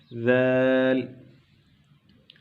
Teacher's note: جیسے آپ نے ثا کا طریقہ سیکھا تھا کہ زبان کو اگلے دو دانتوں کے ساتھ ٹچ کریں گے، لگائیں گے، تو پھر جو ہے یہ ورڈ ادا ہوگا ذال